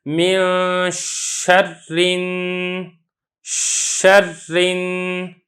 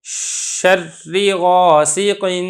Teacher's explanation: جب میں شین ادا کر رہا ہوں تو آواز یہ منہ کے اندر پھیل رہی ہے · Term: تشفی